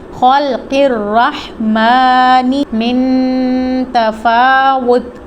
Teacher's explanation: خا اور قاف دونوں مستعلیہ لیٹر ہیں, ان کو پر پڑھیں گے